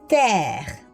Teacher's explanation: R, millel ei ole siis muud midagi, kui et eesti R-i moodi me seda ei häälda, peame ka selle prantsuse R sealt kurgust kuskilt kätte saama